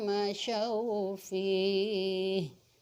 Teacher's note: dalam hal menyembunyikannya dengan dengung atau senau terdengar panjang dua harokat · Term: Idgham Mutamatsilain